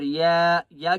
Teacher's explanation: یا کے اوپر چھوٹی مد ہے اس لیے 3 الف کی مقدار کھینچ کر پڑھیں گے